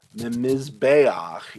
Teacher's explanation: number 14. mizbayach is going to be from an altar but that noon is assimilating into the mem and so it doubles the mem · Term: assimilation